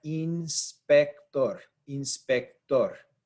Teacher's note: We stress the last syllable here. Inspector. Tor is when we have that stressed syllable.